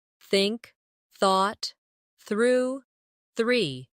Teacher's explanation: put your tongue lightly between your teeth and push the air out for the soft th in think